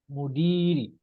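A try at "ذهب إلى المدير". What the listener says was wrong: Masya Allah, sahih. Sesuai dengan teks ya.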